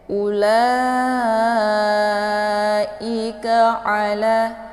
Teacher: I-nya dibaca tipis, kemudian ka dibaca tipis, ala, a-nya dibaca pendek ya.